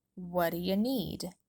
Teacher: because of the phrasal reduction wadia we don't pronounce this t at the end of what instead it drops completely and links to the reduction dia with a flap d